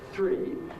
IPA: θriː